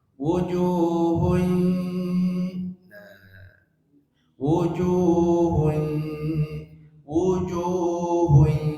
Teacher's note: kata wujuh ketika tanwin menghadapi ya masukkan ke hidung tanwinnya